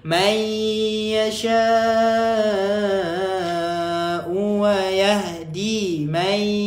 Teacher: Bila masukkan dekat ya idgham ma'al gunnah kena dengung. Masukkan dekat ya kena dengung.